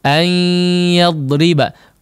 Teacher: menggunakan gunnah yang kadarnya memang dipanjangkan